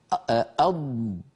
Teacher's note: وأيضا اللسان يتقدم إلى الأمام ويربو الهواء، يربو الصوت المحبوس والمحجوز خلف اللسان فيستطيل صوته، بمعنى يصير أطول. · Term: حرف الضاد